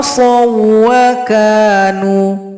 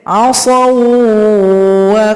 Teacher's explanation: Pertemuan dua huruf yang identik, Wau yang serupa yaitu sukun dengan Wau yang memiliki tashdid. Jadi, dibaca dengan idgham tanpa nasalisasi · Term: Idgham Mutamathilain